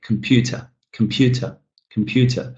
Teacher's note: The syllable that I'm stressing here, the second one, pew, is longer. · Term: stressed syllable